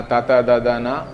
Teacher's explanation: ತ ಅಂತ ಹೇಳುವಾಗ ದಂತ್ಯ ಅಂತ, ಅದು ಹಲ್ಲಿನ ಹಿಂಭಾಗಕ್ಕೆ ತಾಗ್ತದೆ